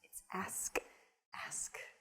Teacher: But when you say ax, it's just totally wrong. Well, it's reversing the consonants in the word ask